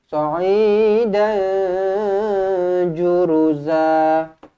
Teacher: Ju pendek satu harakat sahaja, ru pendek satu harakat sahaja, za dua harakat.